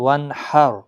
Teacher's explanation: را پور پڑھا جائے گا، لیکن یہ خیال رکھنا ہے وانحر کیونکہ را ساکن سے پہلے زبر ہے